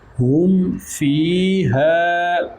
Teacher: میم ساکن کے بعد فا ہے، یہ نہ حرف میم ہے نہ حرف با ہے، اس لیے یہاں پر اظہار شفوی